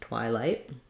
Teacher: so let's talk about twilight first because in twilight we have it's not a rounded sound we have the i diphthong and first syllable stress